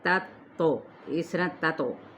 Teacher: لیکن تو کو جلدی پڑھیں گے قلقلے کے ساتھ